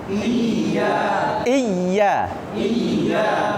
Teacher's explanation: rasakan ya-nya itu tengah lidahnya naik.